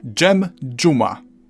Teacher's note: We've covered z turning into ż, and now this can merge with a d into dż.